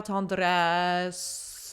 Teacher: she achieves that depth of sound partly by changing the vowel to like almost an A vowel